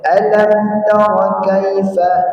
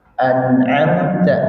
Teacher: izhar dia jelas tidak boleh pakai gunah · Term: izhar syafawi